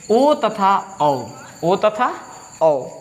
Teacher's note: ओ तथा औ का उच्चारण स्थान क्या होता है? कंठ ओष्ठ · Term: कंठोष्ठ्य वर्ण